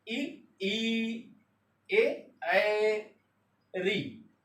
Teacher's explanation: ये जीवा के आगे के हिस्से यानी अग्र भाग से उच्चरित होते हैं। मध्य भाग, जीवा के मध्य भाग से केवल छोटा आ बोला जाता है। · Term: अग्र स्वर